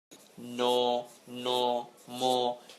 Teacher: ন, ন, ম, এগুলো উচ্চারণের সময় একটু খেয়াল করবে যে আমরা নাকের উপর এক ধরনের চাপ দিচ্ছি। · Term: নাসিক্য ধ্বনি